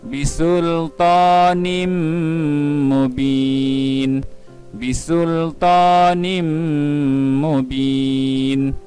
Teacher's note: Lihat pula pada contoh yang kedua, iaitu pada huruf yang berwarna merah yang bergaris, tanda tanwin pada huruf nun akan dimasukkan ke dalam huruf yang kedua, iaitu huruf mim. Maka bunyi tanwin tidak jelas kedengaran.